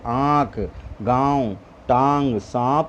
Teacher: अनुनासिक का उच्चारण नाक और मुंह से किया जाता है